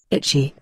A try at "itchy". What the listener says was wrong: Itchy. Chưa nặng nhá.